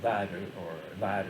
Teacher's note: That L in Bactrian script is probably pronounced somewhere between an L and a D, so lad or lad or something like that.